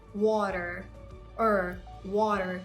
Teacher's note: There are two sounds here, the flat T and the R sound.